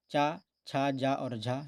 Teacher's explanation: हिंदी की तालव्य ध्वनियाँ हैं चा, छा, जा और झा